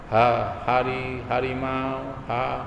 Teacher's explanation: ha-nya di sini pangkal tenggorokan, tidak usah tekan